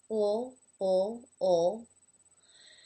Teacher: The light L would be what was described in the video that I already did for the sound ul, and that is when the tongue comes up and touches the roof of the mouth just behind the top teeth in the front